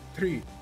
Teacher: if it's a TR in English, we pronounce it as a CH